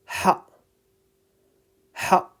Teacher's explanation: Ha is coming from the middle of the throat. Ha, ha. With your mouth slightly open.